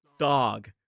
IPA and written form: dɑːg (dog)